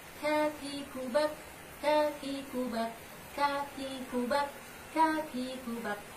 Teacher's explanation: Sedangkan selanjutnya huruf kaf, pangkal lidah dengan langit-langit yang lurus di atasnya, agak keluar sedikit dari makhrajnya of